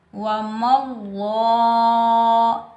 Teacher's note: لفظ اللہ کے اوپر کھڑی حرکات میں سے کھڑا زبر آ رہا ہے تو لفظ اللہ کو ہم ایک الف کی مقدار میں کھینچ کر ادا کریں گے. لفظ اللہ سے پہلے زبر آ رہا ہے تو لفظ اللہ کو ہم موٹا پڑھیں گے.